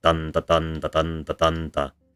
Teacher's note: the stress syllables are quite a lot longer, I think something like 180%.